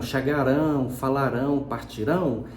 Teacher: Então você tem um O com som de U junto de vogal na mesma sílaba. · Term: glide